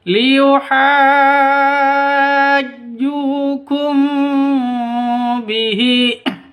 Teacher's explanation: Jadi mim mati bertemu dengan ba, cara bacanya dengung, dibaca dengung. Masamar disertai dengung, 2 ketukan karena bacaan ikhfa safawi.